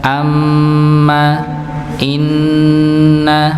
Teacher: Berbeda dengan nun dan mim tadi. Kalau nun dan mim maka didengunkan amma inna misalnya tanpa adanya hentakan. Sedangkan selain itu maka dihentakan. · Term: didengungkan